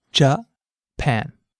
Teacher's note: Notice how the pan part of the word stands out. That's because this syllable is stressed.